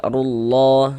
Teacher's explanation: Atau misalnya di sini ada harokat fathah, maka lafaz Allah ini huruf lam jalalahnya kita baca tebal, kita baca tafkhim. Sehingga kita baca rullah seperti itu.